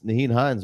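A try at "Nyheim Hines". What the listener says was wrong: you do know you've pronounced it wrong every single week it's there's an m at the end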